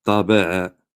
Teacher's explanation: il a bien dit ta emphatique au lieu de ta, ba aminci et a, il a bien sorti le a de Ali, milieu de la gorge.